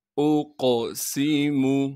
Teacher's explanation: اقسم، حمزہ کو قاف سے ملائیں گے کیونکہ قاف ساکن ہے۔ قاف پر قلقلہ کیا جائے گا اور قاف کو موٹا کر کے پڑھیں گے